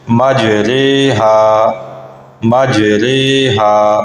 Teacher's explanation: را کھڑا زیر ری نہیں ہوگا بلکہ را کھڑا زیر رے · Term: رائے امالہ